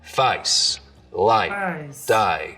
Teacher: the diphthong in face starts real low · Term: face lowering